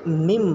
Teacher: نون کو میم سے بدل کر غنہ اور اخفا کے ساتھ پڑھیں گے، اس کو اقلاب کہتے ہیں۔